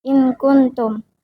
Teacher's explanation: Nun mati dibaca samar dengan gunah karena bertemu huruf kaf. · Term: Ikfa